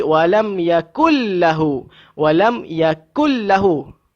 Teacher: Kita hilangkan bunyi nun itu dan masukkan ke dalam lam. Jadi bunyi nun dah tak ada. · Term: idgham kamil